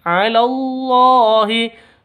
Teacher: Ala awalnya itu panjang karena bertemu dengan hamzah